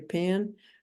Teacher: if you're in Texas or Oklahoma, you really can't hear the difference between a short I and a short E sound